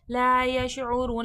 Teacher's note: ला यशऊरून, ला में अलिफ मद्दा है, यश शीन में तफ़श्शी, शीन की आवाज़ में फैलाव है। रॉ वाव पे शुरू, वाव मद्दा खींच के पढ़ा जाएगा।